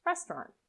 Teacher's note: the a u is often not pronounced so you can link directly from the t to the r